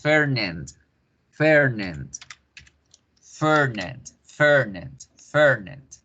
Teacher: Engrosamos la E, la volvemos alargada y ponemos Fernand, Fernand, Fernand, Fernand, Fernand. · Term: E larga